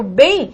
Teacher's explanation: então bem eu estou lidando com ditongo decrescente nasal